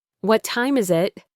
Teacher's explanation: My voice falls on time.